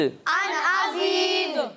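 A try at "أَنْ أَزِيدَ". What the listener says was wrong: ان نہیں پڑھنا، ٹھیک ہے، ان یہ نون کی آواز لوٹتی ہوئی نہیں آئے گی. ٹھیک ہے، ان ازید، ان ازید. یہاں دال کی آواز لوٹتی ہوئی آئے گی. ٹھیک ہے، یہاں کلکلا ہوگا. ٹھیک ہے، ان ازید،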